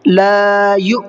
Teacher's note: الف مدہ ہے اور الف مدہ سے پہلے زبر ہے، اس لیے لا کو کھینچ کر کے پڑھنا ہے۔ لا یو، اور حمزہ میں تھوڑا سا جھٹکے کے ساتھ میں پڑھنا ہے، اس لیے کہ حمزہ ساکنہ ہے اور حمزہ ساکنہ کے پڑھنے میں جھٹکا ہوتا ہے۔